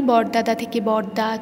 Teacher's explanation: বরদাদা শব্দটির শেষে থাকা দ ব্যঞ্জন ধ্বনি বরদা শব্দে আর থাকছে না, তাই এটি অন্তব্যঞ্জন লোপের উদাহরণ